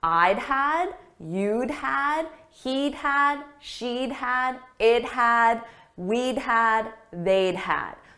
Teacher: So it's a very soft d sound added to the subject. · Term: contraction